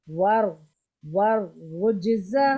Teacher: واو کو را سے ملانا ہے، ٹھیک ہے. ور ور اور را کو موٹا ادا کرنا ہے